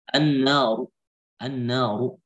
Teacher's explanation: ketika wasal dhamma dia tebal maka ketika waqaf juga tebal.